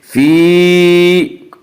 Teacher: فی، یہاں پہ یا مدہ ہے، فی یا مدہ وہ یا جو ساکن ہو اور اس سے پہلے زیر ہو، اور یا مدہ کو ایک الف کی مقدار کھینچ کر پڑھیں گے